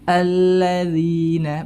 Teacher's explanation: dengan menempelkan ujung lidah ke ujung dua gigi seri atas